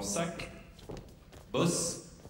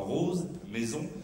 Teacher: une fricative dentale ou sifflante généralement sourde comme dans sac boss ou plus rarement sonore comme dans rose maison